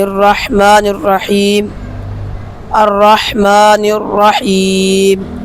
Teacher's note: را مشدد حرف دو مرتبہ پڑھا جاتا ہے، حا ساکن، حا کا مخرج، حا درمیان حلق سے ادا ہوتا ہے، حا کی صفات ہمس، رخاوت، استفال، انفتاح، اسمات، دو مرتبہ پڑھا جاتا ہے۔